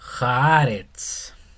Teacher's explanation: en el hebreo no hay como una R fuerte